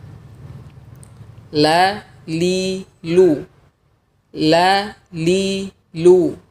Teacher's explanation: makhraj huruf lam ini kurang lebih sama seperti makhraj huruf nun yaitu ujung lidah dan gusi atas hanya saja huruf lam melibatkan juga tepi lidah tidak hanya ujung lidah saja